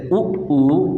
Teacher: हम जब उच्चारित करते तो हमारे होठ वर्ताकार में हो जाता है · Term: ओष्ठ स्वर